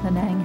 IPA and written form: pəˈnæŋ (Penang)